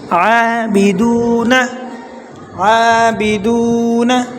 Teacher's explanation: عین کو ایک الف کے برابر کھینچیں گے